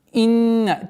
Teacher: Назализация в размере двух огласовок удерживаем над буквой нун